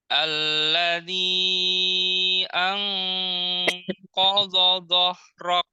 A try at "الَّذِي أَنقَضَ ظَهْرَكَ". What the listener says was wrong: Hamas. Kafnya hamaskan lagi. Zohrok. masih hilang kafnya. Ada udara. Dhahrok. Tadi soderok. Dhahrok.